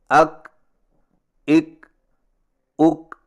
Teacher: اور کاف کی ادائیگی کا صحیح طریقہ یہ ہے کہ زبان کی جڑ کو تالو پر مضبوطی سے اس طرح لگائیں کہ آواز کے سختی سے رکنے کے فوراً بعد معمولی سی گھساہٹ ہو